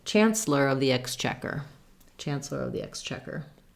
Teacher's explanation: for Exchequer, again, we said second syllable stress. The first syllable is an eh and a k sound, X.